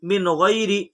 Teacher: نون ساکن کے بعد حروف حلقی کے 6 حرفوں میں سے غین ہے، اس لیے نون ساکن کا اظہار ہوگا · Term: اظہار حلقی